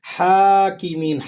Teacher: ہا پہ کھڑا زبر ہے، آپ اسے ایک الف تک کھینچ کر ادا کیجیے گا